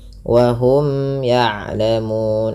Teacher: hukum tajwid berupa izhar syafawi, dibaca dengan jelas mimnya